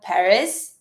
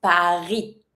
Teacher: One thing when it comes to the name of the city in French, we never pronounce the S.